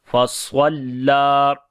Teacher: स्वाद को मोटा पढ़ेंगे, लाम के ऊपर जो है वो खड़ी ज़बर है, लंबा करेंगे